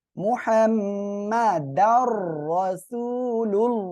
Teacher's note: এই যে আল্লাহ শব্দের লামের ডাইনে পেশ আসছে মোটা করে পড়তে হবে